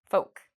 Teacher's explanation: with the word folk, there's no L pronunciation